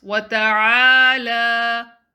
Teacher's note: Prolong the lam to 2 counts.